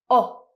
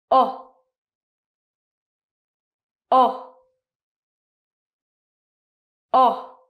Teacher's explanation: So when you produce this sound, your mouth is round, your tongue is very low in your mouth, and it's a very short sound. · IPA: /ɒ/